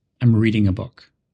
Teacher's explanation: what are you doing and you say I'm reading a book the word reading is stressed because it's new information